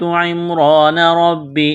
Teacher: حمزہ ذال زیر اذ قاف کڑا زبر قاف کو موٹا کرنا ہے، الف مدہ ہے ایک الف کے برابر کھینچنا ہے، تا میم زیر تم را زبر را کو موٹا کرنا ہے زبر کی وجہ سے